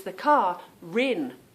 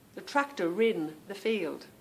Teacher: And it's the car rin. The R seems to go on to the beginning of the word, not the end of my car word.